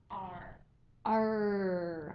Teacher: word retroflex means back and what this refers to is that the back of the tongue is lifted to the top of um the mouth um making the r sound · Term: retroflex r